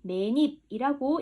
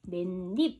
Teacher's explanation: 그래서 여기 자음 플러스 이가 왔기 때문에 중간에 니은이라는 발음이 하나 더 덧나게 들어가 준다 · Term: 니은 첨가